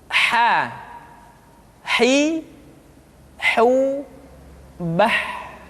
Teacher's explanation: Huruf ha dikeluarkan dari tengah-tengah tenggorokan.